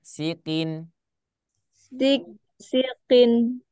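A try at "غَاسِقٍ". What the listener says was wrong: Jangan sik, sik. Nah, itu berarti dia ada tasydid. Sikin. ditekan. Bukan, maksudnya ketika perpindahan antara huruf sin dengan huruf qaf itu jangan ditekan qafnya.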